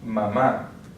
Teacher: we have the accent written accent on the last syllable so that's where we're going to stress